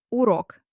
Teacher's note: But wait, there is no letter E here. The R here is hard. The stress is on O.